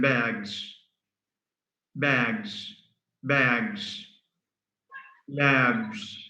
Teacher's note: One is z, which is voiced, as in bags, bags, bags, labs.